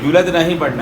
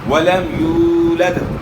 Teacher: ولم یولد یعنی یولد نہیں پڑھنا، یولد یہاں واو مدہ ہے، واو ساکن سے پہلے پیش ہے، اس پیش کو آپ کھینچیں گے تو واو ادا ہوگا